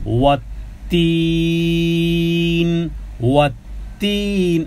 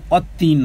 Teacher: দুটি শব্দে দুটি টান, ওয়ের উচ্চারণ দুই ঠোঁট গোল করে।